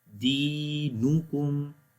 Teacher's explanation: خالی دی کو لمبا کریں گے، باقی سمپل پڑھیں گے